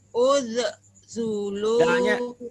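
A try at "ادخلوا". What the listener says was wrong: Dalnya keras. Udkhulu, bukan udulu. Udkhulu.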